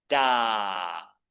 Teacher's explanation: Again I'm keeping it nice and long. I'm also keeping it middle tone